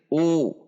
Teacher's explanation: dhammah dibaca U dengan membulatkan bibir